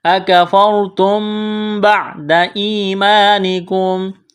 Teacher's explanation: را ساکن سے پہلے زبر ہے، را کو موٹا کریں گے، میم ساکن کے بعد با ہے، یہاں پر غنہ کریں گے، آواز ناک میں چھپائیں گے